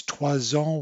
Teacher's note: it's trois ans with a Z sound there and a aux États-Unis with a Z sound for this X